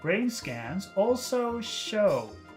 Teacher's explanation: then we have the word show. What do you think about that final vowel sound? Is that a big sound or a short sound? It's a very long sound. It's two sounds. Again, it's O. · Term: long vowel sounds